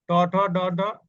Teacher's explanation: এরপরের যেটা আছে ট, ট ঠ ড ঢ, এই যে এই পাঁচটা বলতে গেলে জিহ্বার অগ্রভাগে কিঞ্চিত উল্টিয়ে, হ্যাঁ, উপরের গোড়ার শক্ত অংশ স্পর্শ করে